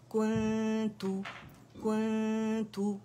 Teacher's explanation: कुन्तू कुन्तू, ठीक है, कुन्तू करके नहीं पढ़ेंगे, मद नहीं बनाएंगे, यानी दम्मा को खींचेंगे नहीं